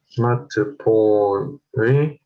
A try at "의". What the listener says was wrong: Not A, it's not pronounced A. A.